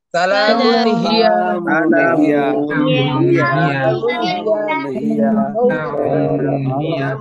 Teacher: মিম দুই পেশ মুন, সালামুন। এই যে তানবিনের পরে ইজহারের অক্ষর হা, স্পষ্ট করে পড়বেন। হাজার হি, ইয়া জবর ইয়া, হিয়া, সালামুন হিয়া।